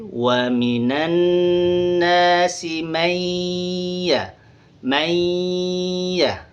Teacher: Tapi karena dia idgham, nun mati bertemu dengan huruf ya, maka nun matinya hilang bunyinya. Jadi yang tersisa tinggal huruf ya itu.